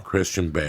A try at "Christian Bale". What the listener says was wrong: Can you not add so many syllables to Christian? Christian.